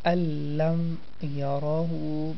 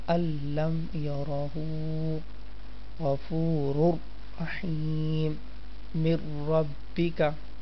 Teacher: The sound of noon will disappear completely.